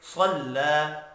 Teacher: صاد حروف مستعلیہ ہے، پر پڑھا جائے گا، لام کے اوپر کھڑی زبر ہے، ایک الف کے برابر کھینچ کر پڑھیں گے۔